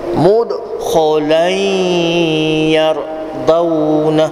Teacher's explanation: bagi cukup dengungnya 2 harakat bunyi tanwin dalam huruf ya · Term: Idgham al-ghunnah